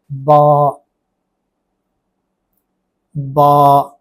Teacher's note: فتحہ کی آواز کو دو گنا کیا ہے، تو یہ الف کی آواز ہے۔ الف کی آواز صرف اتنی ہوتی ہے۔